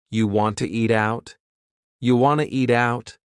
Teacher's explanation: We've dropped the question word completely, do. Just yeah, and then we have reduced want to become wanna.